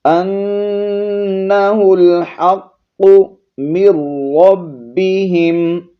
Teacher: ہا کو حلق کے درمیانے والے حصے سے اور قاف کو موٹا کر کے پڑھیں گے